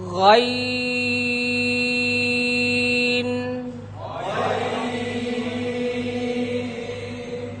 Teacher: এটা কণ্ঠনালীর শেষ ভাগ থেকে উচ্চারিত হয় শেষ অংশ থেকে সেটা আমি এখন আপনাদেরকে উচ্চারণের মাধ্যমে জানিয়ে দিচ্ছি